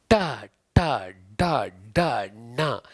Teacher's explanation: ನಾಲಿಗೆಯನ್ನ ಏನ್ ಮಾಡ್ತೀವಿ ಸಿರಸ್ಸಿಗೆ ಬಡಿತಾ ಇದ್ದೇವೆ ಅಂಗಳ ಭಾಗಕ್ಕೆ ಬಡಿತೀವಿ · ಯಾಕೆ ಮೂರ್ಧನ್ಯ ಅಂದರೆ ಶಿರಸ್ಸಿನ ಭಾಗಕ್ಕೆ ನಾಲಿಗೆ ಸ್ಪರ್ಶದಿಂದ. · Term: ಮೋರ್ಧನ್ಯ ಅಕ್ಷರಗಳು, ಮೂರ್ಧನ್ಯ ಅಕ್ಷರಗಳು